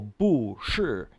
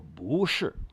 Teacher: You got to switch the boo going up instead of down.